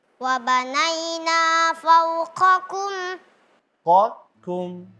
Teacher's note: Qa tebal. Kum tipis. Fau masih tipis. Yang tebal cuma qaf.